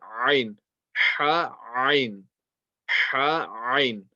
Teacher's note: From yesterday, we mentioned that the letter Ha is from the middle of the throat. Now, the Ain is also from the middle of the throat. So it's going to come from the same place as the Ha.